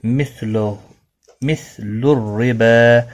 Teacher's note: را زیر کی وجہ سے باریک پڑھا جائے گا۔ با کو ایک الف کی مقدار کے برابر کھینچ کر وقف کیا جائے گا، اور ملانے کی صورت میں بھی ایک الف کے برابر کھینچ کر پڑھا جائے گا۔